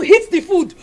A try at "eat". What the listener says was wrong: Did you eat the food? She said hit the food, not eat the food.